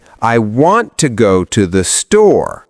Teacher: in the sentence, I want to go to the store, the stress is on want and store.